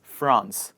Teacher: in this word, the letter R is followed by the vowel A. So we do pronounce the letter R in the word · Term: R plus vowel